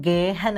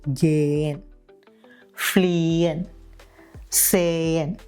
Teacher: ഒരു വവലിനു ശേഷം ഹ വരുമ്പോൾ ഹ എപ്പോഴും സൈലന്റ് ആയിരിക്കും